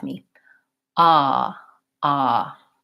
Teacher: my tongue is down at the bottom of my mouth and there's a big opening and resonance towards the back so this is a low back vowel so when I go